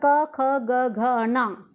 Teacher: क्या है हमारे कंठ के द्वारा बोला जा रहा है